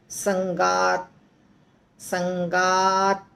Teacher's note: लगता है कि त है आधा पर जब बोलते हैं त के पास आकर रुकता है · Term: त आधा है